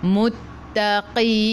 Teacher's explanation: Matikan dengan huruf nun, hujung lidah menyentuh lelangit keras.